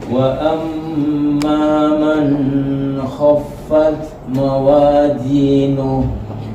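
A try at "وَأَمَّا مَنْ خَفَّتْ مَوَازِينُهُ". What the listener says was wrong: Tadi man kha masih terputus. Man kha. Oke. Man khaffat.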